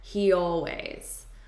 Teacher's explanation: We use this Y sound to connect two vowels. So I have a vowel here and a vowel here. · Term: slight Y